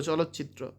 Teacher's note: চ এর প্রভাবে ত হয়েছে চ